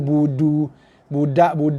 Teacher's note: De Melayu ujung lidah sentuh langit atas.